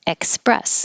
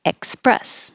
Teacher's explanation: has a k in it, express, because you're stopping the airflow